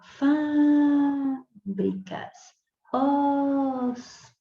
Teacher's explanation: É a antepenúltima. Não é a última, nem a penúltima, é a antepenúltima sílaba.